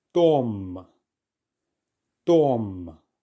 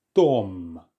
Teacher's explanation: The or vowel sound is more open and sharp. It's also not as long as some vowel sounds can be in English. It's a sharp and brisk vowel sound.